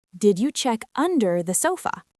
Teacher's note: Make sure you hit that word under with a bit of extra vocal energy.